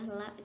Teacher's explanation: Ujung sisi lidah hingga akhir ke ujungnya bertemu dengan gusi gigi atas, 2 gigi geraham kecil pertama dan 2 gigi taring, 2 gigi seri kedua, 2 gigi seri atas